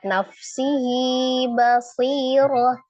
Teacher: Nafsihi, di situ ada hak dhamir yang diapit oleh dua huruf hidup dan kemudian huruf sesudahnya itu bukan hamzah menjadi mad silah sughra. Dibaca dua harakat.